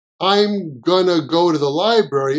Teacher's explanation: The to sounds like a ta, and then we cut the t.